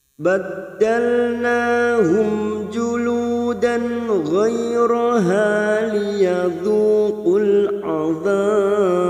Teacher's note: Karena sekarang kita wasol di sini fathatain bertemu ghain. Kita baca jelas tanpa mendengung.